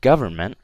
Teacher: when I say government, you can see that stress on the first part, right? So I don't say government, I say government, right?